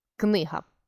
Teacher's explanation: у нас к приголосний глухий твердий н приголосний сонор твердий и голосний наголошений г приголосний дзвінкий твердий